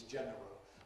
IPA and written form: ˈʤenərəl (general)